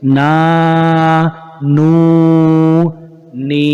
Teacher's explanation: نون الف زبر نا، نون واو پیش نو، نون یا زیر نی، نا نو نی، ناک میں آواز نہیں لے جائیں گے کھینچتے ہوئے، نا نو نی، منہ میں آواز رکھیں گے۔